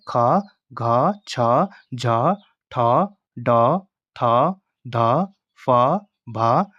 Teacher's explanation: जिन व्यंजन वर्णों के उच्चारण में श्वास वायु अधिक मात्रा में निकलती है उसे महाप्राण कहते हैं। इसमें प्रत्येक वर्ग का दूसरा और चौथा वर्ण प्लस ऊष्म व्यंजन श, श, स, ह महाप्राण होते हैं।